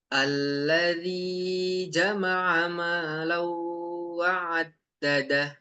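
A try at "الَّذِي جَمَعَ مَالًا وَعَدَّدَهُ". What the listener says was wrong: Afwan, alladinya agak kepanjangan sedikit. Oke, lebih dari 2 harokat. Huruf ain ini memang ya tadi cukup challenging bagi kita.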